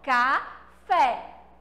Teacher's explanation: agudo em cima dela ele é todo caidinho e o isso fez com que a letra é tivesse um sonzinho aberto